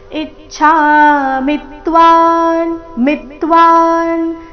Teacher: ಇಚ್ಛಾಮಿತ್ವಾನ್ ಇ ಮತ್ತೆ ಮಿ ಮೇಲೆ ಆಘಾತ